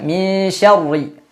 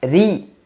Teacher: Padahal yang perlu kita ketahui, huruf ro selama dia berharokat, yakni tidak sukun, maka dia tidak akan terpengaruh dengan huruf sebelumnya. Selama ro itu berharokat kasrah, maka selalu dibaca tipis. Walaupun sebelumnya fathah, tidak terpengaruh.